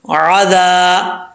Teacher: عین کو پڑھتے وقت خاص یاد رکھنا ہے کہ حمزہ کی آواز نہیں آنی چاہیے، عذاب بو نہیں پڑھنا، باپش بو.